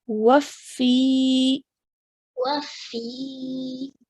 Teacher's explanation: So what we're going to do is that sound that we just made of fi, we're going to stretch for 2 counts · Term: ya madiyya